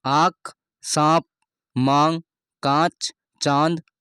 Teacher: इन सभी में चंद्र बिंदु का प्रयोग किया जाता है जो अनुनासिक हैं